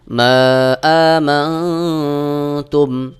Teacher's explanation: নুন সাকিনের পরে তা ইকফার হরফ নুন সাকিনকে গোপন করে ইকফা গুন্না করে পড়তে হবে